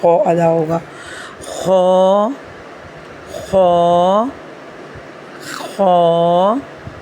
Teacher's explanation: इसको हम वहां से अदा करते हैं जहां से आप हम लोग जैसे गरगरे करते हैं गरारे करते हैं। गौ करके वहां से ही ख अदा होगा।